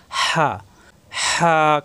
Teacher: হা কন্ঠনালীর মাঝখানে চাপ সৃষ্টি হবে গরম বাতাসের সাহায্যে উচ্চারণ করতে হবে